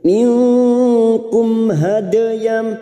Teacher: dal sukun yang mati asli di tengah kalimat, qalqala sugro. Jangan lupa dipantulkan hade. · Mim sukun bertemu ha, idhar safawi. Mim sukun dibaca jelas tanpa mendengung. Minkum hadayam, hade dal sukun yang mati asli di tengah kalimat, qalqala sugro.